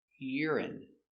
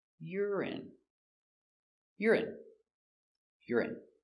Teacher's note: Stress on the first syllable.